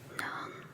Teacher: 能 is the second tone that goes up.